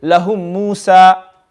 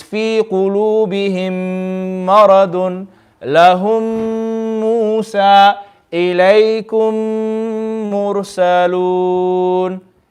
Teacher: Okay, so in a nutshell, the first rule of mim sakin, when there's a mim sakin and another mim directly after it, okay, mim sakin and another mim directly after it, then this rule is known as idgham. The two memes are going to come together and we're going to read it with ghunna.